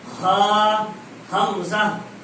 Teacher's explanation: ہا اور حمزہ کا مخرج اقصائے حلق, حلق کا وہ حلق کا وہ حصہ جو سینے کی طرف ہے, اقصائے حلق سینے کی طرف حلق کا آخری حصہ, اس سے نکلتا ہے